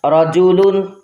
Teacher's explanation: را کے اوپر زبر آیا تو را کو پر پڑھیں گے